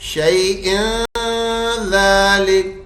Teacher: रवा में हम तनवीन को तनवीन ही पढ़ेंगे, इदगाम नहीं करेंगे, नून नहीं हटाएंगे बीच में से। मिम्मा कसबू अला शैइन ज़ालिका हुवा दलालुल, इस तरह पढ़ेंगे।